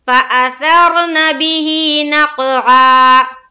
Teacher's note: फा के ऊपर जबर का कायदा और हमजा के ऊपर भी जबर का कायदा जल्द अदा करेंगे। फअ, सा को रा से मिलाते हुए पूर करके पढ़ेंगे, जज्म का कायदा बनेगा लेकिन पूर होगा